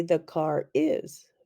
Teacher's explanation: in some dialects the r is linked to other words